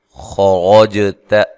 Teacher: خرجت، خا کو را کو دونوں کو موٹا ادا کرنا ہے، اور جیم پہ قلقلہ کرنا ہے، جیم کو ہلا کر پڑھنا ہے۔ تا کو باریک پڑھنا ہے، لمبا نہیں کرنا، زبر زیر پیش کو لمبا نہیں کیا جاتا ہے۔